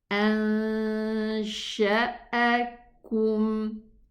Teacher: So here we are going to go to the exit of the sheen and pronounce the ghunna of the noon